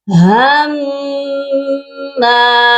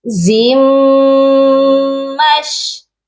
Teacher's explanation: اب دیکھ لیجئے کہ میم پر مشدد تھا، میم پر تشدید تھا، اس لیے میم 2 بار پڑھا گیا